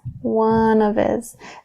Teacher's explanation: we're dropping that H there in his